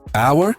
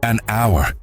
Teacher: Aunque la palabra comienza con h esta letra no se pronuncia por lo que el sonido que escuchamos es una vocal en este caso la o así que para decir una hora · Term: H muda